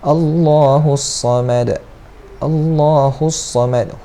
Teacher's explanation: Allah tebalkan dan panjang 2 harakat.